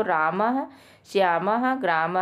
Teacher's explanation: विसर्ग का उच्चारण कंठ से होता है दोस्तों